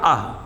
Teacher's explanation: कंठ से बोला जाता है, महाप्राण है और अघोष है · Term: विसर्ग